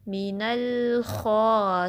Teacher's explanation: ٹھیک ہے، مین ایسی ساؤنڈ نہ آئے، اس کو سٹیبل رکھنا ہے لام کو. اور اس لام کو پر نہیں پڑھنا، ہیوی نہیں پڑھنا، زبان فلیٹ رہے گی. اس کو مینل نہیں پڑھنا.